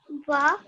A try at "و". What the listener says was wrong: Yes, but the way we pronounce it is like a W. So we shouldn't hear any V sound, no V sound. It's just wa, like a W.